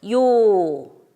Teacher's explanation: 오로 끝나죠. 소리가 일관되지 않고 변하게 됩니다. 그렇다면 이 요 속에는 단모음 오가 있다는 소리입니다. · 반모음 이와 단모음 아가 결합되어 있는 이중모음의 형태가 바로 이 야입니다